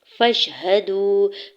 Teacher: फा के ज़बर को शीन साकिन के साथ मिलाते हुए पढ़ेंगे। हा के ज़बर को बगैर खींचे अदा करना है।